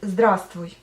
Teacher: Donc en fait, la lettre V tombe quand vous dites здравствуйте.